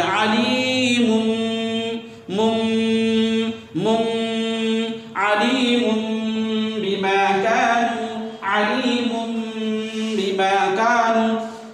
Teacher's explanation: اور 1 الف کے برابر غنہ کریں گے، دونوں ہونٹ کو بند کر کے آواز کو ناک میں لے جائیے، اسی کو کہتے ہیں غنہ کرنا.